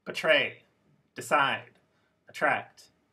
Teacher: to this ready betray decide attract these words are all verbs have two syllables but the word stress was on the second syllable